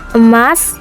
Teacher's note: vokal E, tengah atas pusat tak bundar